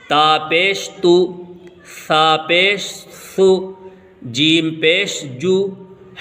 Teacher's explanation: دیکھیے پیش کی شیپ ایسی ہوتی ہے، پیش کو بھی معروف پڑھا جائے اور مجہول آواز سے بچا جائے، تھوڑا بھی نہ کھینچے۔ پیش کی آواز آگے کو جاتی ہے اور ہونٹ گول ہوتے ہیں